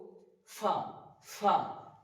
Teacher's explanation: নিচকার ঠোটের উপরে লাগিয়ে উচ্চারিত হবে ফা এবং একটা বাতাস বেরবে সিটির মত নয় জাস্ট একটা বাতাস বের বের উচ্চারিত হবে ফা তারপর হচ্ছে কফ